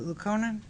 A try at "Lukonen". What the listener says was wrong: The emphasis on the wrong syllable.